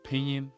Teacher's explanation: The N just sort of disappears or becomes very, very subtle if it's placed in the middle of a word. Often. Not always, but often.